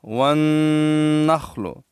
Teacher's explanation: के साथ मिलाएंगे और वा को नून के साथ मिलाएंगे क्योंकि नून भी मुसद है और नून में गुन्ना है · اس کے بعد ہے واو مشدد، تا کو واو کے ساتھ ملائیں گے اور واو کو نون کے ساتھ ملائیں گے، کیونکہ نون بھی مشدد ہے اور نون میں غنہ ہے